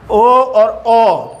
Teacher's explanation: और कंठ ओष्ठ्य में देखो होठों का भी, होठों से भी उच्चारण होता है और कंठ से भी होता है, ओ और ओ। तो इनका उच्चारण कंठ और ओष्ठ्य दोनों से हो रहा है, ओ और ओ, यानी होठों से भी इनका उच्चारण हो रहा है। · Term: कंठ ओष्ठ्य स्वर